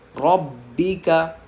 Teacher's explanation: फसब्बिह बिहम्दी रब्बिका, अब रब्बिका में बा पे तजदीद है, जिस हर्फ पर तजदीद होती है उसको तो हम पहली बार 2 बार पढ़ते हैं, दूसरा उस पर हम 2 हर्फ की ताख़ीर के बराबर सख्ती करते हैं। तो बा पे हमें 2 हर्फ की ताख़ीर के बराबर सख्ती करनी है।